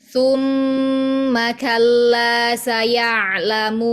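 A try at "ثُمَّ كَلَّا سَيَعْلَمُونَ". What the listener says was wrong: Sedikit masih ada suara dari hidung pas waw matnya.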